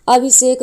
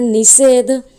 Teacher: इस दंतीय सा का परिवर्तन मूर्धन्य सा में हो जाता है। तो इसीलिए यहाँ पर अभी और शेक मिलकर अभिषेक बनते हैं।